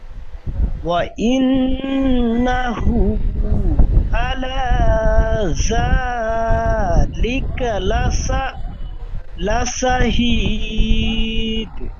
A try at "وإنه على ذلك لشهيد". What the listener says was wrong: এখানে ওয়াইন্নাহু আলা জা, এই জালটি আপনার জার মতো উচ্চারণ হয়ে যাচ্ছে। জাল, জালের মাখরাজ পড়েছিলেন জিহ্বার আগার সামনে উপরে দাঁতের আগার সাথে থেকে জাল উচ্চারিত হয়।